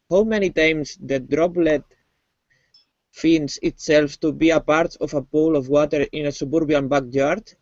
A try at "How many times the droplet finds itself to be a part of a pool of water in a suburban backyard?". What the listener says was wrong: Okay, so let's work on our R sound, okay? Your R is fairly thick when you are pronouncing it, okay?